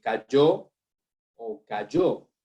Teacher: donde la doble L y la Y se pronuncian igual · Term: yeísmo